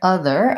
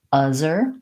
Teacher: If I can't hold my TH, if I can't make it continue, then I'm probably blocking the air. Or if it sounds like uzzer, my tongue is too far back and I'm not getting the vibrational sound, friction sound, from having my tongue between my teeth.